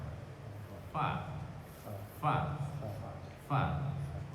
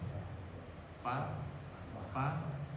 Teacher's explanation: Kalau fa itu keluarnya di antara dua bibir, tapi posisi gigi atas itu nempel di bibir yang bawah.